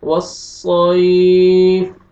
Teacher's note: والصیف، والسیف سین نہیں پڑھنا، صاد. والصیف یا لین ہے، آپ نے نرمی سے ادا کرنا ہے یا کو